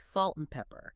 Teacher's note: It's almost always reduced to just the syllabic N sound, like salt and pepper. The vowel disappears entirely, but the sound connecting the words often has the ghost of a schwa quality around that N.